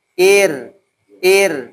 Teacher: karena Ir di sini termasuk dari ro yang tarkik yang tipis